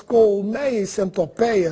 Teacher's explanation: apenas no Brasil as palavras colmeia e centopeia são pronunciadas com timbre aberto? Se você for a Portugal e escutar as palavras colmeia e centopeia com timbre fechado, não estranhe, porque eles também estão falando corretamente.